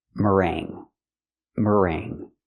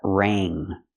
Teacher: of ring is ring we're going to use that sound mering so there's no G it's in your nose because you have the NG together here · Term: the nasal sound